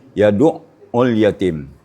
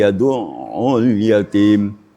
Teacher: tidak boleh memutuskan suara pada ain yang bertasdid seperti yaduul yatim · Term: tawassud